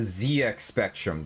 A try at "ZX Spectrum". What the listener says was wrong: Yeah, you said Z very weird. It kind of threw me off there.